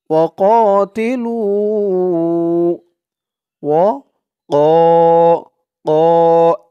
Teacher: কফের আওয়াজটা গলার ভেতর থেকে একটু ধাক্কা দিয়ে বের করতে হবে